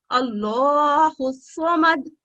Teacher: सौत हरूफ तफहीम है इसलिए इसको हम मोटा अदा करेंगे।